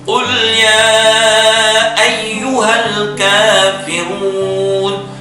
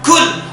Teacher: Itu cuma keliru mengucapkan sifatul huruf, makharijul huruf, tempat keluarnya huruf keliru, qaf dan kaf.